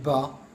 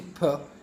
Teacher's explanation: we have vibration in ba and no vibration in P